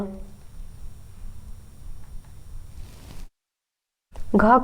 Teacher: घ का उच्चारण स्थान है कंठ